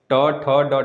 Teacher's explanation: ट ठ ड ढ, जीभ को मोड़ के बोल रहे हैं तो मूर्धन्य हुआ ना